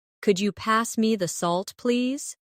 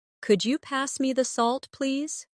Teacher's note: Listen to the way my voice rises on could you and falls gently at the end.